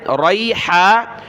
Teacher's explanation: ریحا، را پر زبر ہے، را یا زبر ری، ہا الف زبر ہا، ریحا. ہا کو گلے سے نکالیں